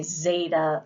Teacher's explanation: Zeta which gives a little D sound there is a buzz about that